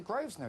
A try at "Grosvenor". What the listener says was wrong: You don't pronounce the S. It's a silent S.